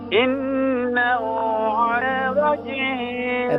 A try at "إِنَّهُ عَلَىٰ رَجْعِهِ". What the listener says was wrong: راج نہیں ہے، را کو فل میں اتریں، راجعیہ، راجعیہ،